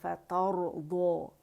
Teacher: را موٹا ہے، فترضى کیونکہ را ساکن سے پہلے ہمارے پاس فتح آ رہی ہے